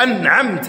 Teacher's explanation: اظهار النون عند حرف العين